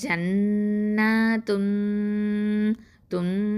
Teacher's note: தன்வீனை என்ன பண்ணணும், மறைச்சு குன்னா செஞ்சு ஓதணும். அப்போது இது வந்து இஹ்ஃபா.